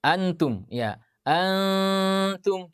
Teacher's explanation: maka ikhfa'nya itu, ya, lidah kita sedikit agak menjauh. Ya, tidak langsung tempel.